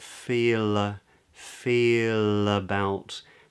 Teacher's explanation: because it's followed by a word beginning with another vowel, it's actually a light L. Too much information to go into right now, but the back of the tongue is low.